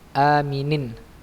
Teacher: A-nya tenggorokan bawah ya, hamzah atau alif